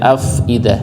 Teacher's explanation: Jadi fa-nya ada keluar nafasnya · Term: hamasnya